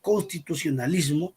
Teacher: la sílaba tónica es la penúltima, es la sílaba fuerte, y todas las demás sílabas son átonas porque son sílabas débiles.